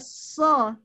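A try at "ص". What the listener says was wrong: Nggak boleh so langsung, mengalir dulu.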